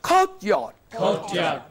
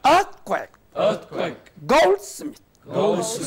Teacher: Compound words with two elements. You are making one part, first element prominent. More than that of the second.